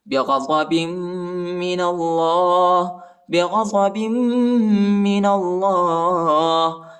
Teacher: وَبَاءُوا بِغَضَبٍ مِّنَ اللَّهِ، با کو میم کے ساتھ ملائیں گے اور غنہ بھی کریں گے، نون کو لام کے ساتھ ملائیں گے اور موٹا پڑھیں گے اللہ کے نام کو